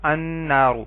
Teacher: نون حروف شمسی میں سے ہے تو ال کا لام نہیں پڑھا گیا